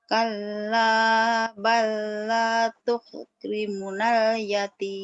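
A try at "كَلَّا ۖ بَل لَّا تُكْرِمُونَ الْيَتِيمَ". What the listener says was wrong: tukrimu panjang. Balla tekan.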